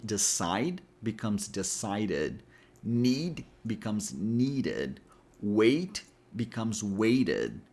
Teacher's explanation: we have to add a full syllable